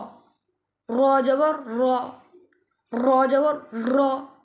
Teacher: এখানে হরফটি মোটা করে হবে। র জবর র, এটা মোটা হরফ, মোটা করে হবে।